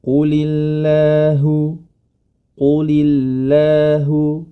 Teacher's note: Lafdzul jalalah Allah yang mana sebelumnya itu hurufnya berharokat kasroh, huruf lam pada kata qulillah, quli, huruf lam berharokat kasroh, maka huruf lam pada lafdzul jalalah menjadi tipis.